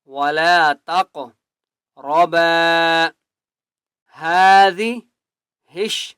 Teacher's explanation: ہا کو ایک الف کی مقدار کھینچ کر پڑھیں گے